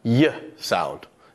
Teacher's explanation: we have our tongue raised high up against the palate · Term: palatal sound